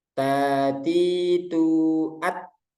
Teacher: Macet dulu suaranya baru dilepas at. Nah, baru itu hamsnya ketika selesai syiddah gitu ya.